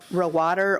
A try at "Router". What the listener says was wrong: Router. A is kind of silent.